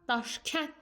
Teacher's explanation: ş ilə k kar samitlərdir. Və bu kar samitlər yazıldığı kimi tələffüz olunacaq. Daş gənd deyə bilmərik.